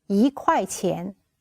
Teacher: When 一 is used before the fourth tone, it's pronounced as the second tone.